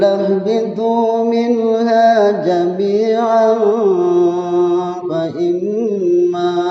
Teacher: tanwin bertemu dengan huruf fa berarti ikhfa. Ya, tapi kalau kita waqaf jami'a mad iwad.